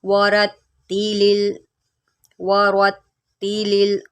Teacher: را کے اوپر زبر ہے، اس کو موٹا کریں